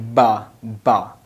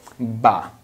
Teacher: ba is pronounced when we join our lips, this like ba.